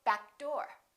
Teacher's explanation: Don't release that k. Just go back door.